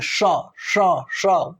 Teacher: तालव्य श मतलब ये वाला जो स है, इसका उच्चारण स्थान तालु है। जब हम इसको बोलेंगे तो हमारे तालु टच होते हैं, श बोलो, देखो सीटी बजेगी